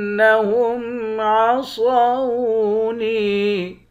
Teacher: نون کو واو کے ساتھ ملا کر واو کو بھی ایک الف کے مقدار کھینچیں گے، واو بھی حروف مدہ ہے۔ · را کو موٹا پڑھیں گے، حمزے کو نون مشدد کے ساتھ ملا کر نون پر غنہ کریں گے، صاد کو موٹا پڑھیں گے۔ نون کے بعد یا ہے، یا حروف مدہ ہے، ایک الف کے مقدار کھینچ کر پڑھتے ہیں